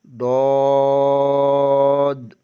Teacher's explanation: زبان کی بائیں کروٹ بائیں دانتوں کے مسوڑوں سے لگے تو ڈاد ادا ہوتا ہے۔